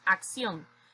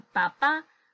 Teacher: agudas que son las que llevan la sílaba tónica en la última sílaba y éstas el tildan cuando terminan en n s o vocal